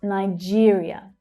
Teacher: where you hear the second syllable stressed that's the /ɪə/ as in 'here' vowel sound.